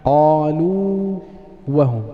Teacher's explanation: الواو الأولى حرف مد فلا يجوز إدغامها، فمن الخطأ أن نقول إيش قالوا وهم، هذا خطأ. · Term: مد التمكين